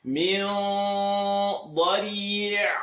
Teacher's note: Nothing has to move because ayn lives in the second part of the throat.